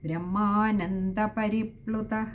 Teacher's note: ബ്രഹ്മാനന്ദ പരിപ്പ്ലുത അവിടെയും വിസർഗ്ഗമുണ്ട് അതും പകുതി ഹകാരത്തിൽ വായിച്ചു നിർത്തുക